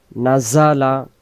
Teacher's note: আচ্ছা, অনেকে আমি বলছিলাম যা অক্ষরে মাখরাজ, হয়তো যেহেতু অনলাইনে ক্লাস হয়তো বুঝতে পারে নাই। তাহলে যা অক্ষরটা আমাদের শীষ দিয়ে পড়তে হবে, অর্থাৎ সামনের নিচের দাঁতের আগা থেকে উচ্চারণটা যা